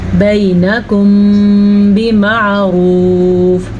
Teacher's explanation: جب کبھی میم ساکن کے بعد حرف با آ جائے، بس میم ساکن ہو اور با آ جائے، ایک چیز کا ہی اس میں آپ نے خیال رکھنا ہے. تو وہاں پہ ہونٹ بند ہو جائیں گے اور غنہ ہو جائے گا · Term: اخفاء شفوی